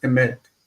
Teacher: The first syllable is like a chataf segod, so it's fast.